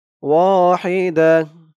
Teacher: ওয়াহিদাহ এই তো চিহ্নতে অক্ফ করার কারণে এই যে গুলতাটা হা হয়ে গেছে।